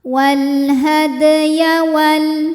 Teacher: Maka dibaca memantul dengan pantulan yang kecil. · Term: qalqalah sughra